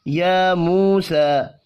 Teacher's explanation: میم ساکن کے بعد یا ہے، اظہار شفی ہوگا، غنہ نہیں ہوگا. یا موسیٰ، یا واو مدہ اور پھر سا تینوں ایک ایک الف کے برابر کھینچ کر پڑھے جائیں گے. یا کے اوپر کھڑی زبر ہے، سین کے اوپر بھی کھڑی زبر ہے، اس لیے کھینچ کر پڑھے جائیں گے، جبکہ مو واو مدہ ہے.